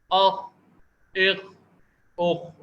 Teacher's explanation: یہ خا جو ہے یہ عربی میں موٹا پڑھا جاتا ہے اور یہ قلقلہ نہیں ہوتا، اس کو اخ اخ اخ اس طرح سے ہلا کر پڑھنا غلط ہے.